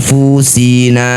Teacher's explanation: Bunyi nun dengungkan dua harakat. Ketika dengung lisannya sudah bersiap bunyikan fa ya. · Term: ikhfa